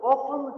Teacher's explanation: Выпадает «т» в слове «often», хотя сейчас оно часто возвращается.